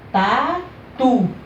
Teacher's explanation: A última sílaba aqui, ó, soou mais forte, não foi? Então ela é chamada de quê? Oxítona